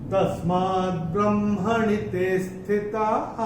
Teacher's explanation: चौथे चरण में जो विसर्ग आ रहा है चरण की समाप्ति पे है, तो इसका उच्चारण केवल और केवल ह ही होगा।